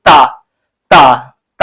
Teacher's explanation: तो दंत से उच्चारित होता है · जब तक आपका जो जीभ है ये स्पर्श आपके दांत को नहीं करेगी तब तक आप ता बोल नहीं पाएंगे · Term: ता ध्वनि